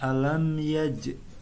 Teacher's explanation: ini dipantulkan sedikit di huruf jimnya karena ini adalah termasuk huruf qalqalah. Karena ini di tengah kata, tidak di akhir, maka qalqalahnya ini dinamakan qalqalah sugro.